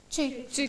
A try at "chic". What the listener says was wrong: No, it is not chick, C-H-I-C-K, no doubt that is chick. But the word, it is a new word here. It is chic. So here, C-H gives us sh sound. Sh, E, K. Chic, something fashionable.